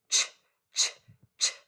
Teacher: Your mouth does almost the same thing as it does for the SH, except CH is a stopper.